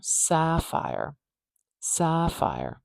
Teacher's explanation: it's really a lot louder and longer at the beginning that a vowel is quite stretched out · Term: primary stress